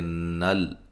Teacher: نون کو لام سے ملائیں گے، لام کو ہلائیں گے نہیں